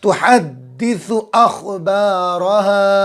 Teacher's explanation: یو، واولین ہوگا، نرم آواز کے ساتھ جلدی پڑھیں گے، یو، یومئذ، ذال کے نیچے 2 زیر ہے، یومئذ تحدث، تحدث، تا اور ہا اور سا اچھے سے نکالیں گے، دال پر تشدید ہے، اور جو ہے تشدید والے حرف کو 2 مرتبہ پڑھیں گے